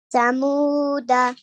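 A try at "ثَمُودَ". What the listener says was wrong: This letter is Tha. Samuda. Now, if you're stopping, this fatha on the dal will become a sukoon. So, Samud, Samud.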